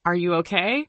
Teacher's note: When you ask a yes no question, your voice should go up at the end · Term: intonation